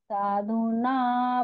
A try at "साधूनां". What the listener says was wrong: शरण्य साधु नाम अनुस्वार है यहाँ पर ना, उसका उच्चारण कीजिएगा।